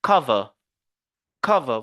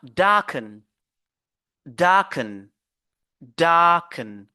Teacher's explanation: ces verbes là on se focalise sur la première syllabe sur la première syllabe